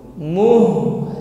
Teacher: Bal, molor, tawassut, masih ngalir suaranya. Jadi bukan muh berhenti pada huruf ha, tapi setelah muh ditutup dengan huruf lam tawassut. Muhl. Jadi bukan muh tetapi muhl, dan juga tidak langsung.